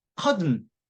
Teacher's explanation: 그 다음에 T가 받침으로 오면 그 다음에 그러니까 TN인데 T의 강세가 없으면 이게 성문 파임이라 그래서 T나 D가 단어 사이에 끼어 있고 강세가 없는데 뒤에 N이 따라와 버리면 N 앞에 T나 D는 받침처럼 앞에 붙어가지고 은발음을 한다는 것이죠. 그리고 그 뒤에 있는 건 은으로 그냥 발음을 해버려요.